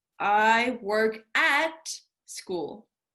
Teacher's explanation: what you want to look out for is under the reduced form notice how there's a schwa sound